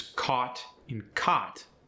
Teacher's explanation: The aw sound and the ah sound sometimes blend.